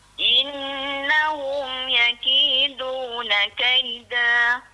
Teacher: Huruf dal kau boleh. Kalau yang bunyi da gitu ya, bunyi da dia macam lidah kita kembang sikit da.